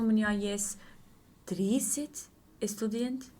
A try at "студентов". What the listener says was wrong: Студентов? 30 студентов? Ты говоришь студент как по-испански. Студент. Студент.